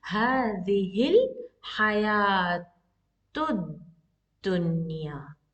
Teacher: Dunya, and this has a long vowel 2 counts.